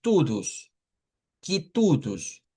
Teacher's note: todas las palabras que terminan en o en portugués se convierten en una u